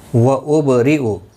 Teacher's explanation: با ساکن پر قلقلہ ہوگا، را زیر کی وجہ سے باریک پڑھا جائے گا۔